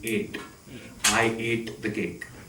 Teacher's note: that first one has to be a pure vowel sound. The T you have to turn into a retroflex sound. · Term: Indian accent